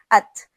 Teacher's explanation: आप अपने मुंह के सामने अगर हाथ रखें और ता अदा करें तो आपको ता में सांस की आवाज भी अपने हाथ में लगी महसूस होगी · آپ اپنے منہ کے سامنے اگر ہاتھ رکھیں اور تا ادا کریں تو آپ کو تا میں سانس کی آواز بھی اپنے ہاتھ میں لگی محسوس ہوگی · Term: صفت ہمس